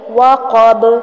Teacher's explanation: وقب قاف کو موٹا اور با کو پھر ہلائیں گے، کلکلا کریں گے